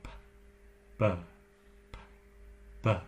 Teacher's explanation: Do you feel the vibration on the B? That vibration is called voicing. It's actually what you do when you hum.